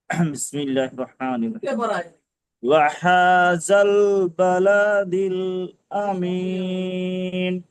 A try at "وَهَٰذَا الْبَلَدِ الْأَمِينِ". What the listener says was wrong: আবার বালা দিল আমিন হয়ে গেল, বালা টান হবে না তো, দেখেন বা যাবার বা, লাম যাবার লা, হারাকাত। وهذا البلد الأمين। বালা টানা যাচ্ছে, বালাদিল, বালাদিল আমিন, বালাদিল আমিন।